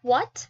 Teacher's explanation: HW, more likely this is used for WH words like what. So you need to blow a little bit of air and then you produce a W sound